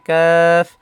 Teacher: কাফ জিহ্বার গোড়া থেকে একটু আগে বাড়িয়ে উচ্চারণ করতে হবে।